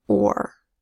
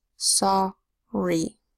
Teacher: The short O is a little bit R controlled, but it's not or. It's sorry.